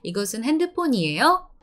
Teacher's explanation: We have to go down a little bit and then up in the end